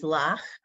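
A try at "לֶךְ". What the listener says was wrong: Not lach. 2 dots next to each other is what vowel? So it's not lach. It's lech. Like lechucha. Yeah, lech.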